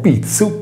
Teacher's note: Se invece pronunceremo pizzu, pizzo, non sentiremo vibrare le corde vocali poiché il suono è sordo. Essendo la consonante T che precede la I consonantica di suono sordo, anche la Z che segue diventa sorda.